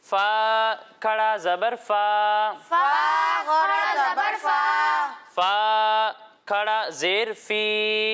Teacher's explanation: खड़ी हरकत को हम एक अलिफ के बराबर खींच कर पढ़ेंगे।